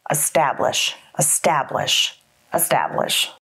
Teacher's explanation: Establish has three syllables, establish, with the emphasis on the second syllable. Establish, establish, establish.